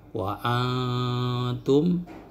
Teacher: Akan tetapi terjadi model bacaan ya, ada ikhfa akrob yang lebih dominan suara samar atau dengungnya itu ke mulut